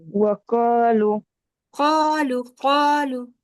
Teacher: قا الف مدہ بھی مستعلیہ موٹا پڑھا جائے گا